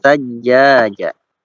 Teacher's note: Sajjaja itu jimnya 2 harokat ya, dua harokat.